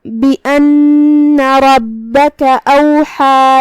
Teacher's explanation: کلمت اوحا میں یہاں ہم ہا کو حلق کے درمیان والے حصے سے ادا کریں گے